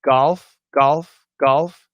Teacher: when it's a hard G, like in golf, golf, golf, yeah, there's a bit of vibration